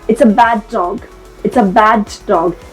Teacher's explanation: I am emphasizing on the D sound but I'm not saying it twice